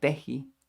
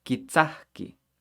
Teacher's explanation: we have a k next to another k again remember double k it's gonna sound like an h